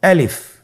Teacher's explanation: আলিফ হরফটি মাখরাজ হলো আপনার মুখের শূন্যস্থান থেকে, গলা এবং মুখের শূন্যস্থান হতে আলিফ হরফটি উচ্চারিত হয়।